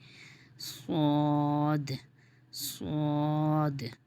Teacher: سواد کا مخرج زبان کا کنارہ جب نیچے کے 2 دانتوں کی جڑ پہ لگے تو سواد ادا ہوتا ہے، اس میں سیٹی بھی آتی ہے اور یہ موٹا بھی ہوگا کیونکہ حروف مستعلیہ میں ہے، تو اس کی ادائیگی کیا ہو جائے گی؟